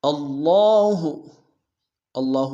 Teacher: اللہ، اللہ میں حمزہ کو لفظ اللہ کے لام کے سامنے لانا ہے، شد زور دیں گے، کھڑا زبر ہے ایک اسم دار میں کھینچیں گے۔ اللہ لا الہ، لام الف مدہ کے ساتھ مد منفصل بھی ہے، مد منفصل کو کم سے کم 2 الف دار میں کھینچیں گے۔